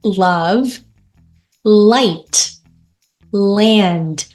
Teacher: 혀를 밀어준 상태에서 소리가 당겨지면서 다음 모음과 합쳐지는 자음 소리를 light L이라고 하는 거죠.